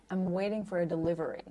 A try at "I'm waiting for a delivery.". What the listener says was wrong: Beautiful. Okay, good.